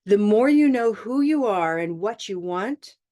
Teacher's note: it was my intonation it went up and I stopped and that is the equivalent of the comma in writing so